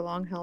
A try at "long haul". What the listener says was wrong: I'd just like to point out that it sounded like you said long hell,